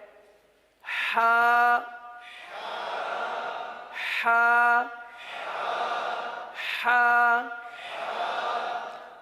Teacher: اب اس حرف کا مخرج کیا ہے؟ حلق کا درمیان، وسط حلق